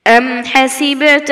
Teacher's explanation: এখানে বার উপর সাকিন আসার কারণে কলকলা আমরা প্রতিধ্বনি করে পড়ব